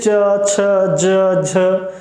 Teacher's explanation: इन सभी चारों व्यंजनों के उच्चारण में जो हमारे मुंह से वायु निकल रही है वो संघर्ष करते हुए निकल रही है, अवरोधात्मक रूप से निकल रही है। जैसे आप बोल के देखिए च, छ, ज, झ, जैसे लग रहा है कि हम अवरोध उसमें उत्पन्न कर रहे हैं, लेकिन उसके बावजूद भी हमारे मुंह से कुछ वायु निकल रही है, तो संघर्षी संघर्ष करते हुए निकल रही है, इसलिए बोला जाता है स्पर्श संघर्षी।